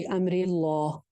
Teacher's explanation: جتنا تفیع الی امر اللہ, امر اللہ میں دیکھیے لفظ جلالہ آ رہا ہے اور لفظ جلالہ سے پہلے زیر ہے را کے نیچے, تو اس کو ہم موٹا نہیں کریں گے